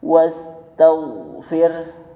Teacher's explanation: Ghain juga huruf isti'ala. Makanya ketika dia sukun, posisi lidah bawah, posisi bibir bawah itu terangkat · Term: huruf ghain